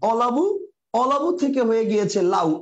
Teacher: কারণ এখানে অ লোপ পেয়েছে আবার ব লোপ পেয়েছে, দুইটাই লোপ পেয়েছে। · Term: ধ্বনিলোপ